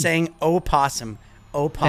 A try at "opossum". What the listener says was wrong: You say possum. You don't say opossum.